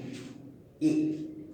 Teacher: এবার এ উচ্চারণ করলে এর মতো পুরো হয় না, কিন্তু অর্ধেকটা হয়, এ পুরো প্রসারিত হচ্ছে না, কিন্তু অর্ধেকটা হচ্ছে, এই জন্য একে বলা হয় অর্ধ প্রসারিত